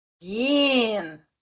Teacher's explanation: Aquele H, ele some, assim, na fala, né? E bota um E ali.